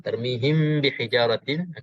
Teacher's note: untuk kita bacakan ikhfa ini dengan dengung dua harakat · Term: ikhfa syafawi